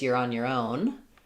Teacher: It can also get reduced to more of a your because in this phrase, you're on your own. Own is going to be the important word. It's going to be the stressed one.